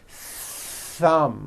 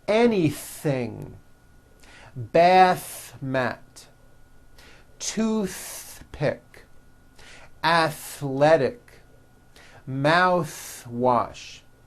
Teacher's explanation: you must stretch out the th sound and hear the air friction